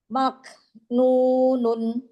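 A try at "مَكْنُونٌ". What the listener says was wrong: Ya, nunnya jangan ngerem. Maknunun.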